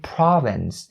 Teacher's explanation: Then if we say province, the first syllable now has the R sound as its vowel